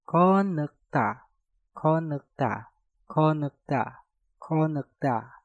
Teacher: Kot diakhiri dengan tiut, setelah itu diikuti kata nek yang diawali dengan nieun. Maka tiutnya kalian rubah menjadi suara nieun.